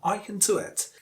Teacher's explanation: The weakest form is can, without schwa after k.